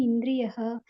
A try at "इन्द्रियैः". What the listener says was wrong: యాక్చువల్గా ఇంద్రియ కాదు మొత్తం ఇంద్రియై యైహి ఇంద్రియై